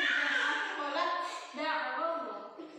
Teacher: Taknya lebur, dalnya diberi tasydid.